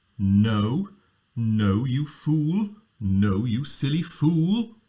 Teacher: an L is a pitched consonant, so you can pitch on it. It's a voiced consonant.